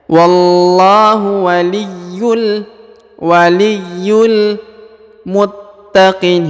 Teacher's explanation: huruf ta ditahan dan ditekan karena terdapat tanda tasdid ya